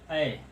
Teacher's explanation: ऐ, अ plus ए, अ plus ए से बनता है ऐ। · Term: संयुक्त स्वर